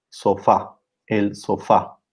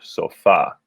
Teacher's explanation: the stress falls on the second syllable instead in spanish so you hear sofa so if you remember the rules that